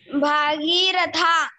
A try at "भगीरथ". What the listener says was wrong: भागीरथा नया नाम निकाला है? भागीरथ, भगीरथ, भागीरथ नहीं, भगीरथ। ठीक है, जब ई की मात्रा लगेगी तो भा में आ की मात्रा भी लग जाएगी।